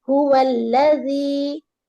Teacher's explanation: لام کو لمبا نہیں کرنا ہے نا کیونکہ یہاں پر فتح ہے ، اور فتح کسرہ ضمہ میں بالکل لمبا نہیں کریں گے، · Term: ایک حرکت